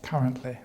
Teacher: the word currently has the first syllable stress